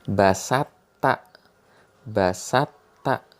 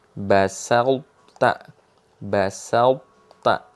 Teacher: Hurufnya dihilangin tapi sifat dari huruf yang dihilangin itu masih ada.